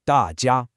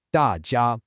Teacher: There's a tendency to let the voice drop which makes it sound like two fourth tones back to back.